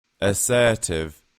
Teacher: in British English the t is pronounced quite uh well quite aggressively in my opinion assertive and in American English it's more it's softer assertive here's